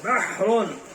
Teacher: ہا کی آواز درمیان حلق سے نکلتی ہے